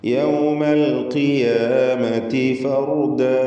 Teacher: ഫർ എന്ന് പറയുമ്പോൾ റാഇന് തഫ്ഖീം കൊടുക്കുക